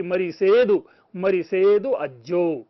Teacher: श जो है यह स में बदल जाता है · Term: शौरसेनी प्राकृत